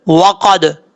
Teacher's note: واو کو پڑھتے وقت ہونٹ گول کریں گے، اگر ہونٹ گول نہیں ہوں گے اس کو واو کو پڑھتے وقت تو سمجھ لیجئے گا کہ واو اپنے مخرج سے ادا صحیح طریقے سے نہیں ہوا.